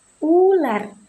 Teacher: Ponem i diucapkan dengan posisi lidah yang tinggi dan berada di depan seperti pada kata ikan. Honem U diucapkan dengan posisi lidah yang tinggi dan belakang seperti pada kata ular. · Fonem U diucapkan dengan posisi lidah yang tinggi dan belakang